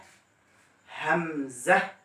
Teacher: কণ্ঠনালীর শুরু থেকে হামজা